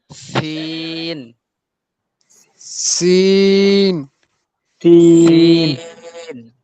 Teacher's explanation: জিহ্বার আগা সামনের নিচের দুই দাঁতের আগার দিকে লাগে। অর্থাৎ জিহ্বার আগাটা এই সামনের নিচের দাঁতের সাথে লাগবে।